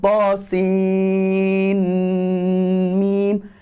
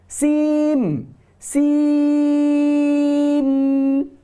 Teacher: Lepas habis 6 harakat, terus kita tutup mulut, dengung 2 harakat pula. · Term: idgham ma'al ghunnah